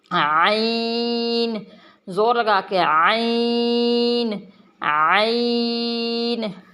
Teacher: عین، عین اور حمزہ میں فرق کریں گے۔ عین، عین کو ذرا سختی سے حلق کے درمیان سے نکالیں گے